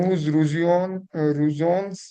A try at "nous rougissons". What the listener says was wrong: Here the ending is son. The ending is rougisson.